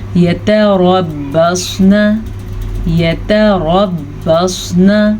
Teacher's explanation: را کو پر پڑھیں گے کیونکہ را کے اوپر زبر ہے